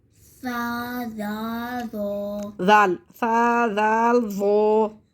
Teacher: सा को नरमी से बारीक, दाल को नरमी से बारीक और ज़ा को नरमी से मोटा पढ़ेंगे। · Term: नरमी वाला हरूफ